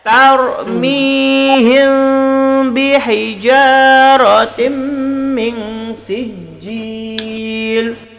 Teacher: Tarmihim him tu bibir tak rapat